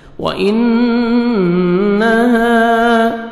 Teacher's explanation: نون مشدد، نوز میں ساؤنڈ لے کے جائیں گے، الف مدہ، 1 سیکنڈ ہا کو کھینچنا ہے۔